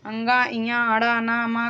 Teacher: 5वें अक्षर अंतिम अंगा, इया, अड़ा, ना, मा का नासिका हो जाएगा उच्चारण स्थान।